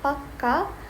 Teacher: For example, in Hindi, paka means right, while pakka with a longer K means firm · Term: Gemini